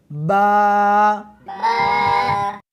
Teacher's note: اس حرف کو دونوں ہونٹوں کے ساتھ ملا کر پڑھیں گے